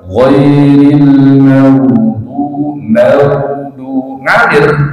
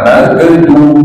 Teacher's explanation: Maka ghain punya sifat namanya wakhawah atau rikwah. Maka dia ketika sukun mengalir Pak.